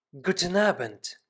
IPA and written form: ˈɡuːtn̩ ˈaːbənt (Guten Abend)